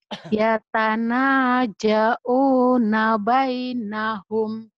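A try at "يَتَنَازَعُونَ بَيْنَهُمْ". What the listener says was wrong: Ya zainya bukan ja, tapi zai rapuh. Ya tanah jauh nabainahum.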